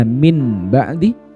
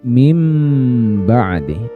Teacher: cara membacanya adalah mengganti bunyi nun sukunnya ke huruf mim. Makanya ada tanda mim di atasnya di sini. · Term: iklab